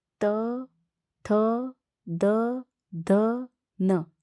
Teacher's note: आपके ऊपर के जो दांत है दांतों का जो पीछे वाला भाग है उनको जीवा स्पर्श करती हैं। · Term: दंत वर्ण